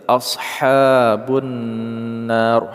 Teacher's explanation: Na kita panjangkan dulu 2 sampai dengan 6 harokat, baru kita sukunkan huruf ra, mad arid li sukun.